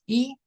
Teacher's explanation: That is the highest, the brightest sound. It's a forward sound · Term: Forward vowel